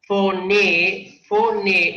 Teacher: Porque la palabra tiene como sílaba tónica la última. Recuerden que aquí hay 2 sílabas. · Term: palabra aguda, aguda